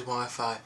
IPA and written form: ˈwaɪfaɪ (Wi-Fi)